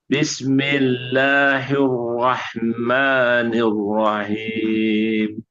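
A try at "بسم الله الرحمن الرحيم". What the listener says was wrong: Ah, bukan rahim. Rohi rahim. Rohim.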